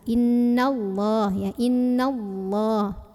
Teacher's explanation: Kemudian ada alif lam namanya alif lam syamsiyah karena ada alif lam bertemu huruf syamsiyah yaitu lam. Maka alif lam ini nggak usah dibaca ya, diidghamkan. Dari nun langsung masuk ke lah. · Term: idgham syamsi